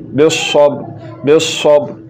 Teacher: ص کو موٹا کر کے پڑھا جاتا